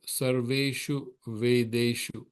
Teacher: shu is short, ve is long, and de is long. Short, long, long.